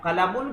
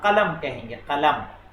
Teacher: आखिर का जो उसके ज़ेर ज़बर रहते हैं उनको प्रोनाउंस नहीं करते हैं। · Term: साकिन